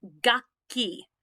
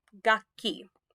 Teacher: hold the next consonant just an extra second